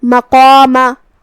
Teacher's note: قاف کی ادائیگی زبان کے جڑ اور تالو کے نرم حصے سے ہے. قاف حروف التفخیم میں سے بھی ہے تو ہم قاف کو اور مد الف کو دونوں کو بھاری آواز میں ادا کریں گے.